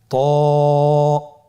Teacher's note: জিহ্বার আগা সামনের উপরের দুই দাঁতের গোড়ার সঙ্গে লাগিয়ে উচ্চারিত হয়।